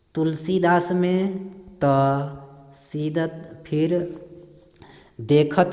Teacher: दांत से उच्चारण होने वाले वर्णों की आवृत्ति हो रही है